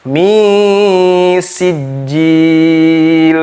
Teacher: Nun mati bertemu dengan sin. Hukum tajwidnya ikhfa, ditahan bacaannya.